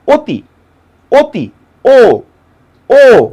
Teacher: অধ্বনিটা যখন ও এর মতো করে উচ্চারণ হচ্ছে তখন সেটা সংবৃত হয়ে যাচ্ছে।